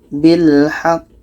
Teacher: Cara bacanya kita tekan sejenak atau 2 detik. Setelah itu kita pantulkan. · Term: qalqalah akbar